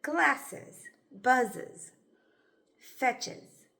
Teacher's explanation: Sometimes a schwa can sound a little like a short U, or a short I, but it's actually more relaxed than either of these.